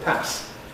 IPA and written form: pæs (pass)